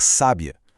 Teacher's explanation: E se a gente puxa esse acento para a primeira sílaba, criamos o adjetivo, uma mulher sábia.